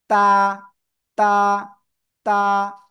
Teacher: জিব্বার আগা, এই যে সামনের উপরে 2 দাঁতের গোড়ায় লাগান, লাগিয়ে জাস্ট এক লিপ টেনে পড়তে হবে।